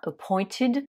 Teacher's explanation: nommé il est à nouveau régulier donc on met juste ed ce ed on le prononce bien ID